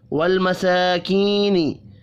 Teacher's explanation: سین کھڑی زبر کی وجہ سے، جبکہ کی یا مدہ ہے، دونوں کو 1 1 الف کے برابر کھینچ کر پڑھنا ہے۔